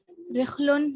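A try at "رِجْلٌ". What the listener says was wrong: ये रिजलुन है, जीम आएगा यहाँ पे, रिजलुन.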